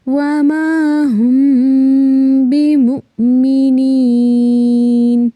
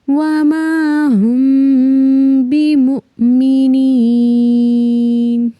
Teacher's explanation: وَمَا هُم بِمُؤْمِنِينَ، یعنی کہ 2 سیکنڈ کے لیے ہم نے صرف میم کی جو میم ساکن کی آواز ہے اس کو ناک میں چھپانا ہے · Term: اخفاء